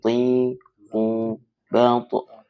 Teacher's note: di belakang gigi itu ada sedikit langit-langit ya. Nah, di situ tempatnya huruf to, ti, tu, balto. · Tinggal kalau untuk mengkoreksi makharijul huruf yaitu to-nya coba lebih dipertebal ya. Kalau lati masih menggunakan huruf T berarti masih kurang tepat ya.